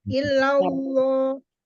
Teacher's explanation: dibaca tebal karena sebelumnya ada huruf yang berbaris fathah